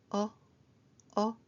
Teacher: 이거는 입모양은 오로 하고 발음은 어로 하시면 됩니다. 입 모양을 동그에 해서 어 어 하는게이 발음입니다.